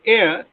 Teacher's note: the glide begins at the front unrounded position between half closed and half open and moves in the direction of the wobble which is a